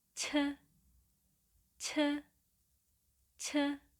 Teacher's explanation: the sound of Chi-Eut is close to C sound in Roman Alphabet, and adding extra air to sound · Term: aspirated sound